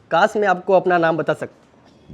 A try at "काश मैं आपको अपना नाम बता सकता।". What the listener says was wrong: मैंने इनसे क्या कहा था? Normal pitch.